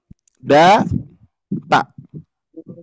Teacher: ujung lidah menempel ke gusi gigi seri atas